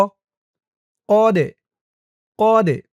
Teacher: এই দালটা কলকলার হরফ, ধাক্কা দিয়ে পড়তে হবে।